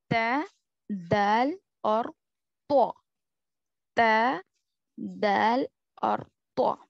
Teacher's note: जुबान की नोक ऊपर के दांतों के अंदरूनी हिस्से को लगने से अदा होते हैं